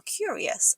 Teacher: It's pronounced curious with a y sound after the C.